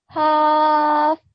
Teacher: Little bit longer here. So remember we've got an example of ya madda. So 2 seconds on the ya.